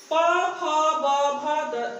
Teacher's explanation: द्वयोष्ठ व्यंजन कहलाते हैं, जो कि दोनों होठों की सहायता से बोले जाते हैं।